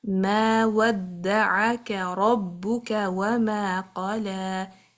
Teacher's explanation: make sure the kaf is light and ayn is light as well